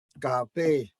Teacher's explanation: The ending syllable is the stressed syllable.